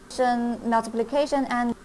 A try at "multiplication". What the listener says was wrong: Multiplication. Multiplication. Not multiplication. There's no L there. Multiplication.